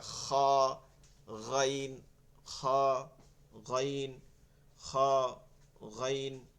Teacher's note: এই তালুতে গিয়ে একটা ঘষা খাইয়া ভাইব্রেশন হয়